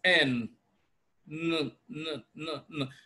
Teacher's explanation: you can of course notice that your tongue is touching the roof of your mouth which is the tooth Ridge